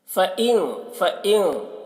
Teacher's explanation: فَإِن نون میں اخفا ہوگا، نون کی آواز کو ناک میں چھپا کر پڑھیں گے